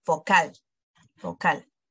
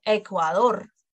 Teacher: And as you can see, the accent falls on the last syllable, vocal, vocal, con una L.